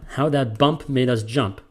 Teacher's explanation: The emphasis, the accent, the stress is on bump and is on jump. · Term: anapestic